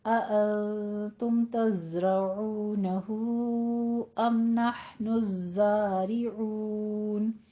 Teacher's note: الزارعون زئی کے اوپر تشدید ہے، سختی کر کے فتح قائمہ ادا کرنی ہے